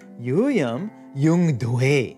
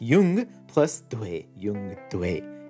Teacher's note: the ja has jumped up to velar, but since the dha is voiced, it retains the voicing and becomes ga, giving us yung plus dwe, yungdwe.